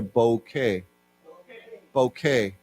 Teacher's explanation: we don't pronounce the T we just say bouquet